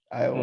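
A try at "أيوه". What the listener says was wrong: No, not Iowa. It's like if you just took the O out and just said Iowa.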